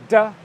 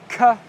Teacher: sounds and what happens with the plosive continent sounds is that airflow is temporarily completely restricted and then it explodes out your mouth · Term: plosive consonant sounds